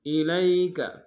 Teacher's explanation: الی میں لام کو یا کے سامنے لیں گے، یا لین بغیر کھینچے پڑیں گے